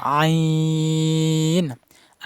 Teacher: আইন হরফের মাখরাজ হলকের মধ্যখান মানে গলার মধ্যখান থেকে উচ্চারণ হবে হালকা চাপ দিয়ে বেশি চাপ দেওয়া যাবে আইন আইন সবসময় মসকর